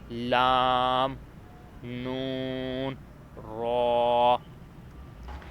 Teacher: ہم نے زبان سے ادا ہونے والے حروف تقریباً پڑھ لیے ہیں۔ اب صرف 3 ایسے حروف رہتے ہیں جو زبان کے کنارے سے ادا ہوتے ہیں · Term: حروف طرفیہ